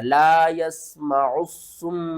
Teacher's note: میم مشدد کے اوپر آپ نے غنہ کرنا ہے